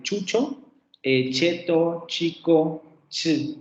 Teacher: Un sonido africado postalveolar sordo. Este sería el fonema de chucho, cheto, chico, ch, el fonema ch.